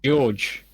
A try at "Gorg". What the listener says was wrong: No, Gorg. There's no E.